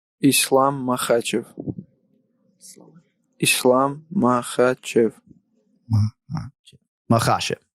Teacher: He emphasizes the second syllable